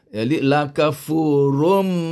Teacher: Kita kena masukkan bunyi tanwin ini ke dalam bunyi mim. Jadi bunyi rum. Tanwin asalnya bunyi run. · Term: idgham bi gunnah